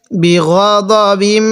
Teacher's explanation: বি গ দ, বা লাগবে আবার এই মিমের সাথে বিম, বি গ দ বিম। এখানে আমরা গুণনা করব নাকের বাসি দ্বারা, কারণ মিম এবং নুনের উপর তাজদিদ হলে সেখানে আমাদের গুণনা করতে হবে। বিগদিম এরকমভাবে গুণনা করব।